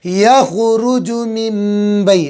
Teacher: من ماء دافق یخرج من بی، نون ساکن کے بعد با گیا اقلاب، نون ساکن کی آواز کو میم سے بدل دیں گے